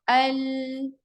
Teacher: ये जितने भी आपके आगे के दांत है ना, यहाँ से जो स्टार्ट हो रहे हैं, ये सब यूज होते हैं लाम में। दांत यूज नहीं होते हैं, मसूड़े यूज होते हैं, इसके जो मसूड़े होते हैं ना दांतों के, वो यूज होते हैं। · ये जो उभरी हुई लेयर है वो यूज होती है, और जबान बिल्कुल इसके ऊपर है ना फैल सी जाती है, यानी कि अगर आप पढ़े अल, तो आप महसूस करें कि जबान मेरी पूरी फैल गई है, आगे के हिस्से में मसूड़ों पर फैल चुकी है